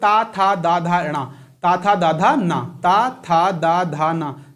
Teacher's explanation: आपकी जो टंग है, जीभ है, वो कहां लग रही है, आपके दांतों में लग रही है, इसलिए ये वर्ग कौन सा हो जाएगा, दंत वर्ग हो जाएगा।